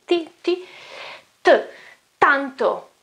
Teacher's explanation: you use the top of your tongue and you hit the backside of your front teeth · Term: dental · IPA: /ti/